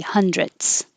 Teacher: So yes, you can keep the th, hundredths. However, you can take a shortcut and not make a good th and just make a t